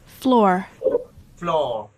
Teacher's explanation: র উচ্চারণ হলে ওটা লাস্টের র, এটা হচ্ছে আমেরিকান অ্যাকসেন্ট